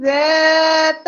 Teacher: سیٹی کی آواز نہیں آنی، سختی کی آواز نہیں آنی، زال ہے، سافٹلی ادا ہونا ہے بغیر سیٹی کی آواز سے